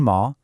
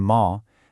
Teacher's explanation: You've got the flat tone ma, the falling tone, ma, the rising tone ma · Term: six tones